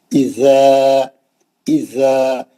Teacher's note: اذا زبان باہر آئیں گی، دونوں دانت اس کو لگا کے پڑھیں گے. اذا زبان باہر آئیں گی، سامنے کے دانت اس کے اوپر ٹچ کریے، دانت پورے اس کو ٹچ کریے، زبان لگا کر پڑھے جانے والا حرف ہے. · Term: زبان لگانے والا زال